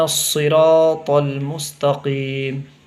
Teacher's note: را کو تھوڑا کھینچنا ہے اور را کی آواز بھی موٹی ہوگی، طا کی بھی آواز موٹی ہوگی